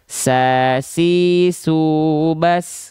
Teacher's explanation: huruf sin kan dia punya sifat hams, tapi dia mengalir nafas.